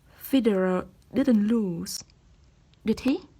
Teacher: a rising intonation when we really want to know some things and are not sure of the answer